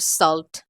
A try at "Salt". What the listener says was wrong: I think you pronounced my name very wrong. It is Salt and now you say Slut.